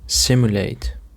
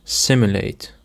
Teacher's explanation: The stress on the first syllable